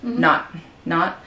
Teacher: so here the t would be the glottal stop